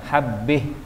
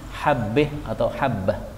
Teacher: kalau berhenti boleh dibaca imalah, habbih.